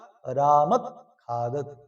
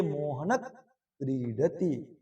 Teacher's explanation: ये जिहवा मूल से बोले जाते हैं और क और ख वर्णों के पहले लगते हैं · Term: जिहवा मूलय